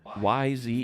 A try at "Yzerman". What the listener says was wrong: First of all, you think the Y is pronounced Y, and you think the E is pronounced E. So it sounded like his nickname was Stevie, and his last name was Zierman.